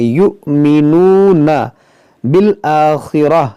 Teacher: یہ حمزہ ساکنہ ہے، اس واو کو نہیں پڑھیں گے، حمزہ کو پڑھیں گے